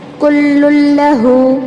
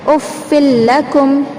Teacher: لام کو لام میں ملا رہے ہیں لیکن غنہ نہیں کرنا ہے، آواز کو ناک میں نہیں گھمانا ہے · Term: ادغام بلا غنہ